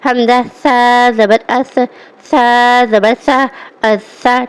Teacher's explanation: اس میں فرق یہ کرنا ہے سا اور سین میں کہ سا میں جو ہے سیٹی کی آواز بالکل نہ آئے